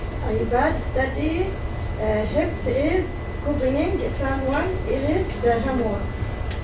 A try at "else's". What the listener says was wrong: That word else, apostrophe S, you have to get the sound of the S. So you have to say else's.